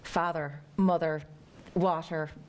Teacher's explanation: But Irish, you've got to say, father, mother, water. The R is really strong.